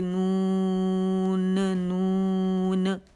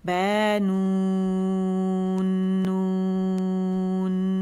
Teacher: یہ حروف قلقلہ نہیں ہے بلکہ حروف غنہ ہے، تو اس پہ غنہ ادا کرنا ضروری ہے. کیسے، با نون نون، پورا پورا حق دینا اسے.